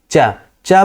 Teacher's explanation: च बोलने से पहले ही आप देखिए आपकी जीभ जाकर के तालु में चिपक जाती है। टच हो जाती है।